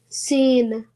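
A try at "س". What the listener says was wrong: Not a sound at the end. Seen. No, again, you're saying the a sound. Don't do that. It's seen.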